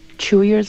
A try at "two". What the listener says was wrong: Chew came out like a TCH. So chew versus two. T, t, t, ch, ch, ch, t, t, t.